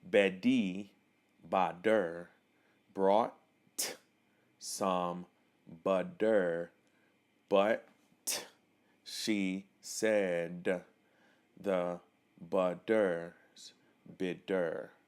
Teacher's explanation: the letter T in the middle of words often end up becoming D's